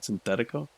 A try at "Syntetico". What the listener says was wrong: Well, there's no H. SYNTETICO.